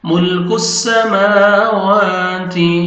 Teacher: تا کو آپ نے باریک پڑھنا ہے تاکہ تھا میں ساؤنڈ مکس نہ ہو